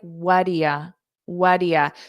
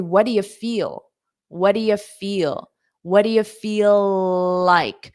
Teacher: these three words are very commonly reduced into wadia